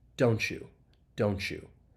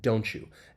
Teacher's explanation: the final T in don't and the beginning Y, that Y sound in U, they blend together and you get this ch. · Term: assimilation